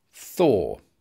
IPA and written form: θɔː (thaw)